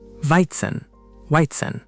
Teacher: Notice the German W sounds like an English V. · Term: W to V switch